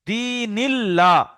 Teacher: আল্লাহর লামের আগে নুনের নিচে জের, তাহলে বারিক পড়তে হবে, লা পড়তে হবে, ল পড়া যাবে না। আল্লাহর লামের লাম মুসাদ্দাদ বলতে পারে বা লাম বলতে পারেন।